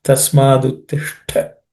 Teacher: there Ush is cerebral sh, and Ta is aspirated, which is second letter in the Ta Varga.